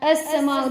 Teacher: السما پہ جو ہے مد متصل ہے تو ہم اسے کھینچ کر پڑھیں گے تھوڑا